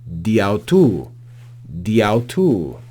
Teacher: they drop the alpha at the end of Dia and simply read this prepositional phrase as diato diato almost as one word with that Alpha dropped so Dia